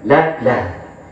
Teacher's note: Ha di situ adalah ha yang sifatnya ma'rifat. Cara makharijul huruf pengucapannya dengan dada